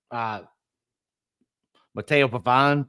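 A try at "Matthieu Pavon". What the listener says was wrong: Nice pronunciation, but okay. You had an O there, Matteo. Matthew. Pavon.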